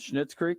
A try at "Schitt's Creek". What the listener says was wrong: No. No, there's no N in there. Yeah, I'm positive.